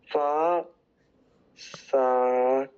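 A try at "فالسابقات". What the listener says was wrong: Alright, but say it together. No, it's not far, but rather fast. You're gonna join, right? So fast. Fasabiqati.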